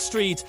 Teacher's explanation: In English, words can start with str like street, but not with ng